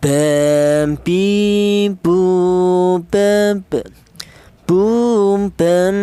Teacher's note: Huruf ba ini keluarnya huruf berasal dari kedua bibir yang rapat